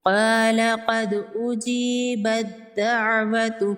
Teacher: ता को नहीं पढ़ेंगे। ता को दाल के अंदर मुदम कर देंगे। ता को साइलेंट कर देंगे। · یہاں پر بھی با کو ڈائریکٹ دال کے ساتھ ملائیں گے، تا کو نہیں پڑھیں گے، تا کو دال کے اندر مدغم کر دیں گے، تا کو سائلنٹ کر دیں گے۔